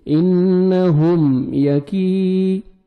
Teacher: کاف کو باریک پڑھنا ہے اور 1 سیکنڈ کھینچنا ہے